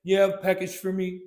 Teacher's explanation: he emphasized the four part but still he connected this piece together